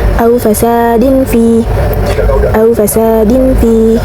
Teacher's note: Lalu juga ada ikhfa, yaitu terdapat tanwin bertemu dengan huruf fa. Cara bacanya suara tanwin condong ke huruf m